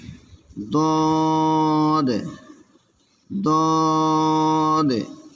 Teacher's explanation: জিহ্বার গোড়ার কিনারা উপরে মারিদ দাঁতের গোড়ার সঙ্গে লাগাইয়া দদ